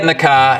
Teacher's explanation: n keeps its manner as is, but changes the place of articulation, so it becomes n. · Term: assimilation